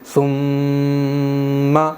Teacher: میم پر میں تھوڑی دیر ٹھہرا رہا ہوں، ایک الف کے برابر رکا رہا ہوں، جیسے ثم، اسی کو کہتے ہیں حرف غنہ یا پھر غنہ کرنا۔